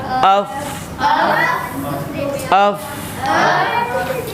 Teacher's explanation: अफ अफ अफ, अफे नहीं, अफ। फा पे आवाज़ जारी रहेगी। अफे नहीं कर, और कलकला भी नहीं करना। अफ ये भी नहीं करना, ये गलत है।